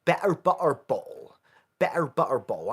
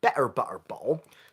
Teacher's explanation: slamming open and close of my glottis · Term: glottal stop